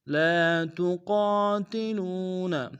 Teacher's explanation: قاف کو موٹا ادا کریں گے، الف مدہ کو ایک دائیں میں کھینچیں گے، لو میں واو مدہ اس کو بھی ایک دائیں میں کھینچیں گے۔